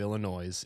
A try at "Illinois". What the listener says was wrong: Did you just pronounce the S in Illinois? is that a thing that people do? Is that a Philadelphia thing?